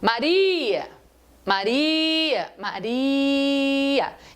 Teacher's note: Então a palavra Maria, que tem 3 sílabas, a penúltima sílaba da palavra Maria é a tônica da palavra Maria